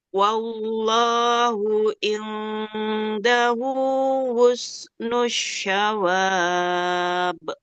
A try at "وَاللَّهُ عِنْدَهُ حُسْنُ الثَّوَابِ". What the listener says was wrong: Tidak sya tapi sa. Wallahu indahu husnus sawab.